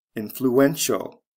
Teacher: influential spelling changed from c e to t i a l the syllable stress goes from the first to the third syllable